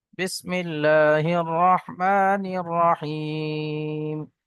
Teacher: এখানে ইয়া সাকিনের পূর্বে জের এসছে, ইয়া মাদ্দা, একালি পরিমাণ টান হবে।